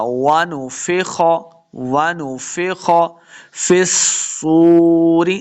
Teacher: صاد مشدد ہے، فا کو صاد کے ساتھ ملا کے پڑھیں گے